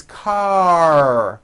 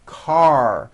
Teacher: your tongue has to pull back car and also your lips close a little bit in the front the r needs to be very strong